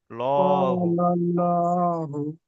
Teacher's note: আল্লাহ শব্দটাকে পুর করে পড়তে হবে, অর্থাৎ ল উচ্চারণ হবে